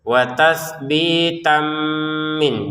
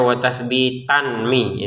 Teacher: tanwin bertemu mim kita masukin dengan dengungan